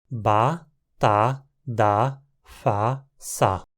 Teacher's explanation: Não existe nenhuma consoante velar, nem nenhuma consoante nasal.